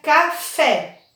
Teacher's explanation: a sílaba tônica no caso é a última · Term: oxítona